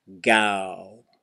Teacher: you're going ah but then you're closing your lips and that makes it go to oh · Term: hidden rounded end